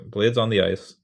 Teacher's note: And then ice is stressed, right? So da da da da, or like da da da da.